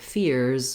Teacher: that would be like the word fears where the S is a Z sound